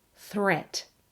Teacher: threat is actually pronounced with the short vowel e, just like pet. Threat. They rhyme with sweet and straight and debt.